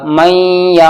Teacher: अब मीम साकिन के बाद फिर या आ गया तो नाक में आवाज जाएगी